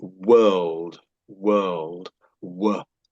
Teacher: When I'm making that stretched out w sound, I've got my mouth open. It's sort of fairly round.